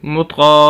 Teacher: یہاں پر زبر زیر والی بات وہی آ جائے گی، آگے یہ الف پھر آ رہا ہے، یہ بھی الف مدہ ہی کہلائے گا، طا کو ہم لمبا کریں گے، مطقا، اور طا کو موٹا بھی کریں گے کیونکہ موٹے حروف میں سے ہے